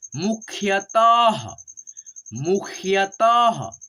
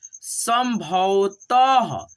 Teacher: अह की मात्रा है तो पढ़ेंगे ह के रूप में